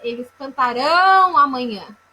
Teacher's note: Então, quando eu digo cantaram, eu tenho aí a sílaba tônica é o tá, eu tenho uma paroxítona. Quando eu digo cantarão, eu tenho a sílaba tônica a última, então é uma oxítona.